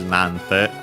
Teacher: Just like in this case, nante, the accent is still on the na. Then with the additional te, it gets shortened into na n instead of na ni.